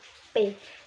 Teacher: ketika bibir bawah bersentuhan dengan bibir atas